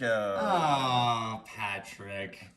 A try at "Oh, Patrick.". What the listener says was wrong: He's not adorable. Why do you say it like he's adorable?